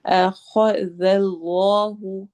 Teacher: اس میں جلالہ کو موٹا کرنا ہے